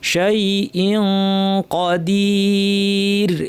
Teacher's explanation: জিব্বাকে কফের মাখরাজে সম্পূর্ণ লাগিয়ে দিব, নাক থেকে গুন্না করব, যেহেতু কফ ভারী গুন্না করব। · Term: ইখফা